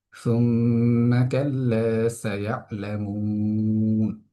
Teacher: শুধু এখানে এসে আমরা সুম্মা শব্দটির মধ্যে আমরা গুণা করে উচ্চারণ করছি। এটার কারণ আমরা জানি যে নুনে মিমে যদি তাসদীদ হয় তখন আমাদেরকে গুণা করে উচ্চারণ করতে হয়।